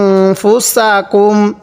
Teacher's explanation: এই মিমের মধ্যে স্পষ্ট করে পড়বো গুন্না করবো না